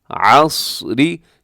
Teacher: صاد موٹا ہے، عین کو حلق سے ادا کرنا ہے۔